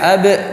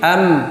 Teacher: Sifatnya beda lah. Kalau ba sifatnya ada qalqalahnya, kalau mim enggak ada qalqalahnya. Kalau mim ada gunnahnya, kalau ba nggak ada gunnahnya · Kemudian mim am juga bibir lagi. Artinya sama-sama 2 bibir. Artinya makhrajnya sama, cuman beda sifatnya.